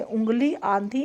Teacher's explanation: तो जब स्वर केवल मुख से बोले जाते हैं तो उसका रूप साधारण होता है, परंतु जब स्वर नाक से बोले जाते हैं तो उनके ऊपर चंद्रबिंदु लगाया जाता है। ऐसे स्वर नाक से बोले जाने के कारण अनुनासिक कहलाते हैं